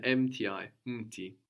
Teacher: the u completely gets swallowed up and isn't written either